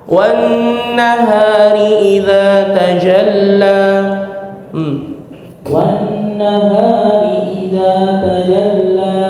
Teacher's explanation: Wan-nahari idza tajalla 2 harakat, jangan ditekan akhirnya deh ya. Jadi jangan wan-nahari idza tajalla ya, 2 harakat tapi biarkan dia melayang.